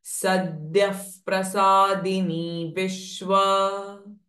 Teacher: So here visarga, sadyah followed by pra sound. So visarga sound ha will change it to fa.